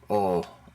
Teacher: o in Spanish just o o cut short oh without that extra breath of air